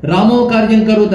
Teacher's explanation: క ముందు విసర్గ ఓ అవ్వదు